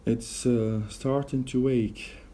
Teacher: we have inserted or intrusive we between to and ache, so it sounds like wake.